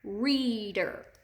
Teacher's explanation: we definitely hear the long e in that first syllable